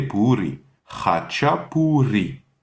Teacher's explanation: encore la R espagnole, le R roulé